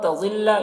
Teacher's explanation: یہاں پر اخفا ہوگا نون میں، نون ساکن کے بعد تا حروف اخفا میں سے ہے، ضاد کو پر پڑھیں گے